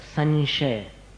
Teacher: न जैसा नहीं है। वो श जो आया ना आगे शक्कर वाला, उसमें अपने को अनुस्वार का उच्चारण मिलाना पड़ता है